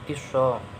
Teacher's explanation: Tiso ini alif lam qamariyah sebab ada alif lam bertemu dengan huruf syamsiyah yaitu shod, dan kalau membacanya lamnya tidak nampak, akan tetapi dimasukkan langsung ke shod